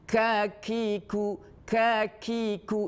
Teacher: Jadi huruf Kaf ini kita harus dikeluarkan udaranya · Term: Hames